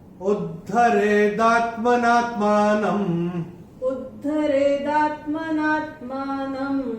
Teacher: न के ऊपर अनुस्वार चरण की समाप्ति पे आ रहा है, इसलिए इसका उच्चारण केवल और केवल म ही होगा।